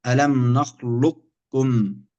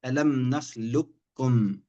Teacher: فالقاف هنا ساكنة والكاف متحركة، فالحكم هنا الإدغام، إما الكامل نقول نخلقكم يعني القاف تحذف ذاتا وصفة، أو يكون إدغام ناقص نخلقكم بحيث القاف تحذف لكن تبقى صفة الاستعلاء فيها فتصبح هكذا ألم نخلقكم.